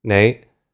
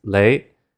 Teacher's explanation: the N sound was replaced with an L sound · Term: sound shift